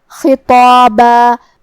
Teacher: حرف الخا کو ہم حلق کے اوپر والے حصے سے ادا کریں گے جو کہ خا حروف التفخیم میں سے ہے اور اس کے بعد حرف الطا ہے اور اس کے بعد مد الف بھی ہے تو ہم یہ تینوں حروف کو بھاری آواز میں تفخیم سے ادا کریں گے.